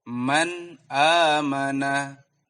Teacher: Man di sini dibaca dengan jelas. Karena setelah huruf nun sukun ada huruf hamzah. Man amana. Tidak boleh didengungkan. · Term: izhar halki